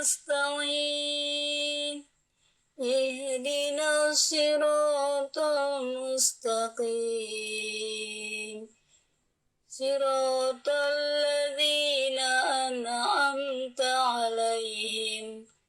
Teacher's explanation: Suaranya, karakternya agak serak ya, serak basah.